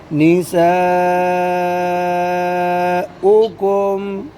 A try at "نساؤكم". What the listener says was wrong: आपने मद छोड़ दिया।